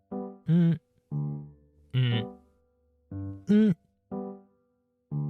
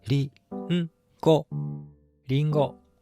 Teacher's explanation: It is nasal sound. It has no vowels and is a special sound. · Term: Hatsu-on